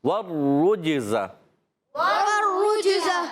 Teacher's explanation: را مشدد ہے، ذرا رک کر ادا کریں گے، را پر پیش بھی ہے، ہونٹ مسلسل گول رہیں گے۔